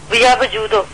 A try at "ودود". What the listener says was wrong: وجود دال کے ساتھ، دونوں دال یہ ودود ودود.